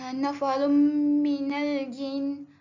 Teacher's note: tanwin bertemu dengan mim, perlu dibaca idgham ma'al gunnah, didengungkan sebanyak 2 harakat dan kita perlu masukkan bunyi mim tu dalam tanwin